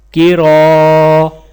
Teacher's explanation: را کے ساتھ الف ہے تو الف کو 1 الف کے برابر کھینچ کر پڑھا جائے گا، اور را کے اوپر زبر ہے تو را کو موٹا پڑھا جائے گا۔